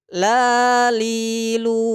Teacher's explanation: huruf lam ini tempat keluarnya tentu dari ujung lidah dengan langit-langit di depannya